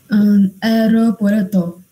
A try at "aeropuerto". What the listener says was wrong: No, tengo, no pronunciamos unidas, sino A-E. Aeropuerto.